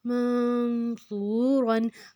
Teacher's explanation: جو ہے وہ نرم حروف ہے، صا کے اوپر پیش ہے، واؤ ہے آگے جزم، تو ہم اس کو دو حرکت لمبا کریں گے